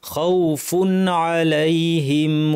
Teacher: তানউইনের পর আইন আছে, হালকের হরফ, কণ্ঠনালী হরফ, এই জন্য নুনটাকে স্পষ্ট করে খাউফুন স্পষ্ট করে বলতে হবে, অতিরিক্ত লম্বা গুন্না ছాড়াই